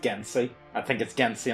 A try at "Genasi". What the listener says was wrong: Why would they pronounce it Gensi whenever there's an A in it? Genasi?